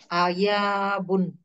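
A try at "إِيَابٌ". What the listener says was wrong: ইয়াবুন। আয়া কেন? কাসরা না, ফিআলুন। তাহলে ইয়াবুন।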